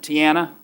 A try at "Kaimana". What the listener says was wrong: Kamana with a K. Kaimana.